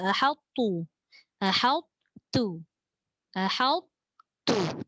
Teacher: Pun sebenarnya sukar juga kalimah ni sebab hamzah dengan ha tu kena bunyi istifal ataupun disebut nipis. Ha.